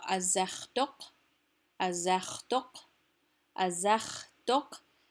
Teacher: The zech is stressed. Dok is a stray syllable. So this is an iambic foot here, where zech is stressed, and dok is just a stray, poor dok.